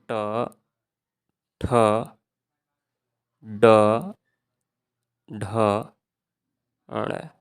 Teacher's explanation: हम अपनी जिह्वा को ऊपर टच करके थोड़ा सा क्या है मोड़ करके उसको बोल रहे हैं, तो हम उसको मूर्धा बोलेंगे।